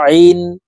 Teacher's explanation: আইন হরফ হলকের মধ্যখান থেকে চাপ দিয়ে উচ্চারণ করব কারণ আইনের মখরাজ হলকের মধ্যখান থেকে হবে।